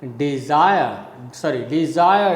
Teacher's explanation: the first one is weak and the second one is strong so you can say it is a rising rhythm